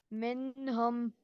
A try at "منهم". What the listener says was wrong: No, no gunna. No, minhum. This is gunna. No, why you are doing gunna? You are reading izhar, right? Noon has sakin and next letter is throat letter. So how you will read? You will not stretch for a single second. Minhum.